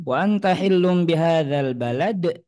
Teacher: huruf dal sukun di akhir. Kalau kita sukunkan maka ada suara qalqalah.